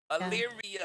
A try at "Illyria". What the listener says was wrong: You keep forgetting the "ia" at the end.